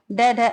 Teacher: ड ड उत्क्षिप्त व्यंजन है। यानी द्विगुण व्यंजन है